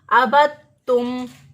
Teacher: ہے یہ ساکن ہے اور آگے دیکھیں مشدد حرف ہے، تو دال کا تا میں ادغام کر کے دال کو تا بنا دیا